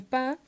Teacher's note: También dejamos fuera la sílaba final, como en pa en lugar de para